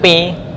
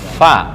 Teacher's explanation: Bibir yang atas agak nyong ke depan, hanya ujung gigi atas dengan bibir bawah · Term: makhraj fa